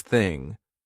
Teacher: No voice, there's no buzz in my throat. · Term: unvoiced TH